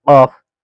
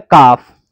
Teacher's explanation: ये बड़े काफ से हलक में से निकलेगा कॉफ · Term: कॉफ बड़ा